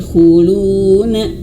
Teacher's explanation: khuluna, lu panjang karena ada huruf waw yang mati ya